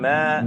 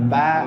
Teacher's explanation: Perbedaan antara huruf mim dan ba ada di permasalahan gunnah, yaitu keluarnya rongga suara dari rongga hidung.